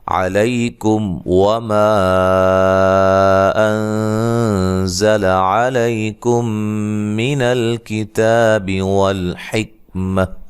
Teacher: میم ساکن کا اظہار ہے، غنہ نہیں کریں گے